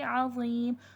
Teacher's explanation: ज़ा हुर्फ़े मुस्तालिया है, मोटा हुर्फ़े मोटा करके पढ़ा जाएगा